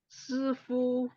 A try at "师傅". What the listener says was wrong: 师傅。 Ya, fu-nya 5 ya. 师傅。